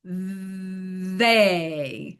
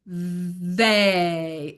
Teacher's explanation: the TH, the tongue comes into contact with the teeth. There's a little bit of vibration. They. And the mouth just opens.